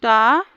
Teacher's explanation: ये मूर्धा में आता है अल्प प्राण अघोष टा